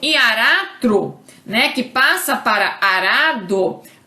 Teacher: o fonema vibrante né o r que tá no encontro consonantal ele é eliminado